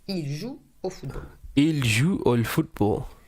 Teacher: you cannot hear the final S